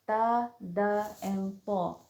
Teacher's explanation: They come from the same place, which is a taraful lisan when it touches the roots of thinaya ulya.